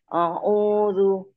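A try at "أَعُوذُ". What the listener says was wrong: A-nya tipis Ibu, bukan O ya. A.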